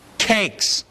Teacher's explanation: Do you feel a puff of air after the first ka that's not there after the second? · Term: aspirated